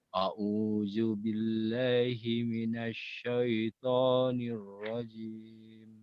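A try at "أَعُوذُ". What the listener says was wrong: Masih ya, masih zal. Coba nanti PR-nya Bapak adalah zal diperbaiki. Zal itu kalau bahasa mudahnya adalah lidahnya dikeluarkan sedikit kemudian digigit. Tapi jangan terlalu ditekan. Za, zi, zu, baz seperti itu.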